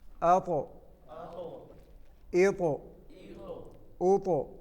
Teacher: طا موٹا حرف ہے اور حروف قلقلہ میں سے بھی ہے